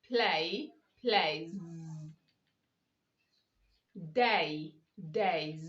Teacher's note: you say z because you have a vowel before the s which is a plural